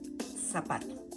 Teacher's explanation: We don't. We're going to pronounce it as if we're an S.